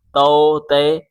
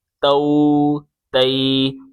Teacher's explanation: ان کو کھینچنا نہیں ہے، بغیر کھینچے پڑھیں گے، نرمی سے پڑھیں گے اور مجہول نہیں پڑھیں گے۔ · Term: معروف